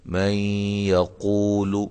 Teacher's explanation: یا کی مثال نون ساکن کے بعد یا آ رہی ہے تو یہاں ادغام مع الغنہ ہوگا